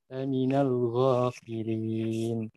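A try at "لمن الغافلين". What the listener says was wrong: Poinnya kurang tebal tuh, mesti ga laminal gho. Laminal gho. Ini jadi ya, antum ini mesti seperti mengarah pada G Latin ya, bahasa kita ya, gaga, gigi, gugu ya, kayak kita. Nah, kalau ghain dalam bahasa Arab ini mesti lebih tebal dari bunyinya dan dari sifatnya.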